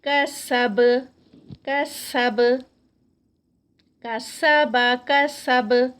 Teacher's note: تینوں میں سے کچھ بھی ہیوی نہیں ہے, سب لائٹ ہیں